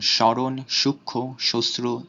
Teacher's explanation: মফলার উচ্চারণ শব্দের শুরুতে বা যুক্ত ব্যঞ্জন বর্ণের সাথে থাকলে উচ্চারণ নাসিক্য হয়